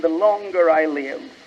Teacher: they will pronounce the R because it's followed by a vowel and it acts as a liaison